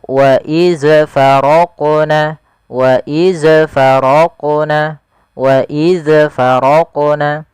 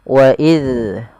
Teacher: hati-hati dalam melafalkan huruf zal yang dia berharokat sukun, jangan sampai ia terpantulkan. Yang pertama kesalahan terjadi mantul, itu salah, mantul.